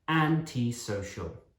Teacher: And antisocial, the stress is at the start again. Antisocial, not anti or antiso, antisocial.